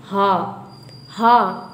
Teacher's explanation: एकदम स्वर यंत्र से ही निकलता है।